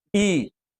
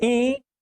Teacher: थोड़ी मुंह से निकलेगी ज्यादा नाक से निकलेगी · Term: अनुनासिक